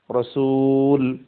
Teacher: রসুলুন রসুলিন উভয়টা ওয়াকফ অবস্থায় রসুল হচ্ছে